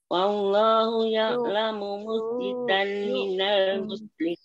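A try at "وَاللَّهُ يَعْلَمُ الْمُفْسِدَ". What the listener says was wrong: Coba nggih Bu, wallahu ya'lamul ada lam di sukun di situ, wallahu ya'lamul mufsida minal musrih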